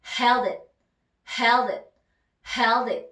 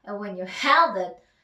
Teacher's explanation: D 다음에 I가 오니까 또 붙네요. 자, 그러면 한 단어처럼 소리를 내줍니다.